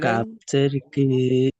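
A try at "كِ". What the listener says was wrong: আচ্ছা, মাশাল্লাহ, সুন্দর উচ্চারণ করেছেন কিন্তু টানগুলো ভুল দিয়েছেন। যেমন আপনি প্রথমে পড়েছেন কাবজের কি, কাবজের কি, এটা হারাকাতের পড়া, কাপের নিচে জের এসছে শুধুমাত্র, এটা হারাকাত। হারাকাতে পড়া টান দেওয়া যাবে না, টান দেওয়া নিষেধ।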